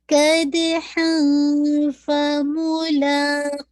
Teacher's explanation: تنوین کے بعد فا آ رہا ہے تو کیا ہو جائے گا، اخفا، لائٹ اخفا ہوگا کیونکہ فا از دا لائٹ لیٹر، ٹھیک ہے. · اب دیکھیے قد دال پہ ہلکا قلقلہ ہو جائے گا